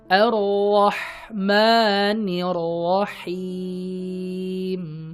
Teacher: ketika kita mengucapkan huruf H, yang mana makhrajnya itu keluar dari tengah tenggorokan ya, tengah tenggorokan